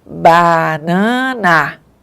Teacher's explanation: nós temos 3 As na palavra banana e não pronunciamos do mesmo jeito. Um A é oral e os outros são nasais. Então, o ar saiu pela cavidade oral no primeiro A e depois no outro foi nasal, tá?